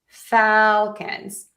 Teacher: for Falcons, we are going to stress the syllable number one, fal, Falcons. So we have Atlanta Falcons.